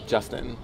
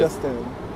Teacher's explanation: Justin is trochaic. It's a trochee because it's accented, unaccented. So accented on the beginning is trochaic.